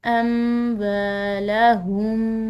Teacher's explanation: ينفقون، آگے دیکھیں، اموالہم، واو کے بعد الف مد آ رہی ہے تو اس کی وجہ سے ہم نے اس کو کھنچاؤ دینا ہے